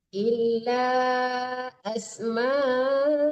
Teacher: Disamarkan ke sin karena dia ikhfa hakiki.